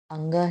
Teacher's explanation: अंग है तो अंग क वर्ग में आता है, तो नासिका के साथ कंठ।